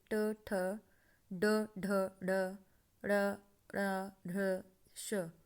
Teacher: मूर्धन्य, कठोर तालु के अगले भाग से